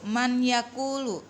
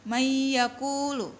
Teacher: nun sukunnya atau tanwinnya tidak dibaca atau diabaikan, langsung masuk ke huruf berikutnya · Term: idgham bigunna